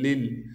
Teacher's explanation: ادغام کے قاعدے سے ذال کے نیچے جو دو زیر کی تنوین ہے اسے ہم ختم کر دیں گے۔ لام پر تشدید ہونے کی وجہ سے تھوڑا سا ٹھہراؤ رکھیں گے، پھر اس لام کو دوسرے لام سے ملائیں گے جو کہ ساکن ہے۔